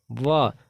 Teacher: सही उत्तर हो जाएगा दंतोष्ठ। व, दांत और ओष्ठ को मिला करके व बोलते हैं